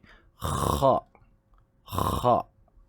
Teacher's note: huruf kha makhrajnya ialah di bahagian kerongkong, tapi di bahagian atas bahagian kerongkong, bahagian atas sekali